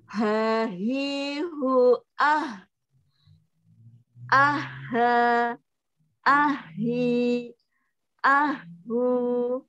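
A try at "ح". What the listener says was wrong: Cuma sedikit kurang tebal, Bu. H. Gitu, Bu ya. Ada sedikit kayak ada H-nya juga. Tapi kadang-kadang.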